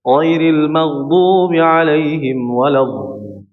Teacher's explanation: Namun praktiknya belum tepat sehingga mengalirkan atau memanjangkan suara huruf dhad dengan suara huruf dha, dengan berubah dengan huruf dha, bocor ya, bocor suaranya